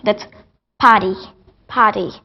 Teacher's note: if R is after a vowel, so they turn to drop it.